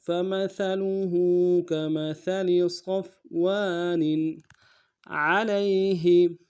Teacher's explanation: نون کے نیچے تنوین ہے، غنہ ہوگا، لیکن چونکہ آگے عین آ رہا ہے حروف حلقے میں سے تو غنہ ادا نہیں کریں گے، تھوڑا سا غنہ کریں گے.